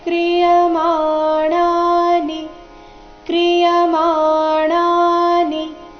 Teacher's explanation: ಮಾ ಣ ಎರಡು ಸಹ ದೀರ್ಘ ನಿ ರಸ್ವ ಬರಬೇಕು